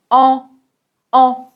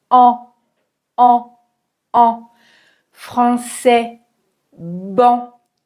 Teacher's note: pour la voyelle nasale, l'air, va passer par la bouche et par le nez en même temps